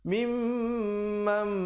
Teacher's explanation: Nun mati bertemu mim. Asalnya mim bari atas bertemu nun bunyi man. Tapi bila datang mim jadi mam, dengung 2 harakat. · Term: idgham bi gunnah